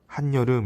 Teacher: 니은이 새롭게 생겨서 우린 이 현상을 니은 첨가라고 이야기를 합니다